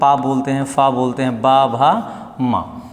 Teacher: होठ जब आपस में मिलते हैं तो हम प बोलते हैं फ बोलते हैं ब भ म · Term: प वर्ग